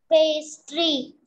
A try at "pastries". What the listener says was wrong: Pastries. Pastries. It's not just pastry, it's pastries.